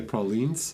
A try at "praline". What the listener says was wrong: It's just that usually you guys are a bit singing words when you are trying to pronounce French words. Be more flat. No excitement. We should be depressed when saying that.